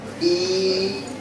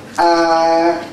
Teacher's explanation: And look at the behavior of the tongue inside the oral cavity. You have the sound E, you have it higher in a very close position. And A is the opposite, open position.